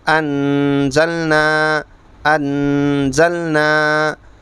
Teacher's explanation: اس لیے کہ نون ساکن ہے، نون ساکن کے بعد زا اخفا کے 15 حرفوں میں سے ہے تو یہاں جہاں بھی 15 حرفوں میں سے کوئی حرف ہوگا نون ساکن تنوین کے بعد وہاں اخفا ہوگا، پڑھیں گے گننے کے ساتھ